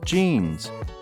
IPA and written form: ʤinz (Jeans)